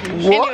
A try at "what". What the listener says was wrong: Why don't you pronounce what correctly? Why do you pronounce like W O T?